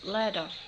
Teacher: Australian speakers tend to drop the T.